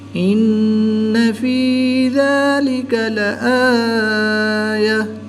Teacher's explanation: نون مشدد میں ہمیشہ غنہ ہوتا ہے، تو یہاں پر ہم غنہ آنی کر کے پڑھیں گے۔